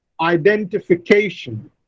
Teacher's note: The fifth syllable receives the primary stress and the second syllable receives the secondary stress.